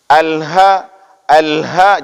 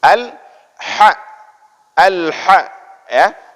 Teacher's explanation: ketika membaca huruf ha itu ditengah tenggorokan tenggorokan Jangan dibaca dengan bacaan ini dengan pangkal tenggorokan Lha lha